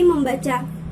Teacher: tidak ada soalnya dalam proses pengimbuhan fextra fixme pada dasar baca akan memunculkan bunyi sengau m yang semula Tidak ada